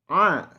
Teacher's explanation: Pengucapan huruf a harus berasa sampai ke hidung kita.